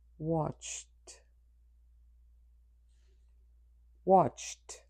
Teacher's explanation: In its past form, the final ed will be pronounced t